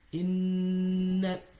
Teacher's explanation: whenever a noon has shadda and the mim has shadda, so the pronunciation of the shadda comes out from the khayshum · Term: noon mushaddada